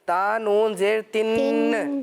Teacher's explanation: تن غنہ تو کرنا ہے, لیکن یہاں قلقلہ نہیں کرنا. ایسے تا نون زیر تن, ایسی آواز آ رہی تھی نا, تن ن, ایسا نہیں, بلکہ قلقلہ نہیں ہوگا اس میں.